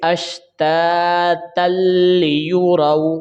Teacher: لام اور را کو بغیر غنہ کے ساتھ پڑھا جاتا ہے، ملا کر پڑھیں گے لیکن غنہ نہیں کیا جائے گا